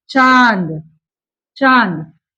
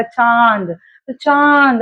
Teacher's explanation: चंद्र अनुनासिक की परिभाषा है, इसका उच्चारण नाक और मुंह दोनों से होता है। जैसे कि मान लीजिएगा यहाँ पर लिखा हुआ है चांद, चांद, तो हम इसको नाक और मुंह दोनों से होता है।